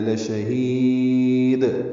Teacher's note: سکون ہے، یا ساکن کے بعد دال ساکن کیا گیا ہے، دال ساکن پہ قلقلہ ہوگا وقفاً